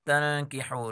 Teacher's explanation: نون ساکن کے بعد حرف کاف ہے، اخفا کا قانون ہے، اخفا غنہ کے ساتھ پڑھیں گے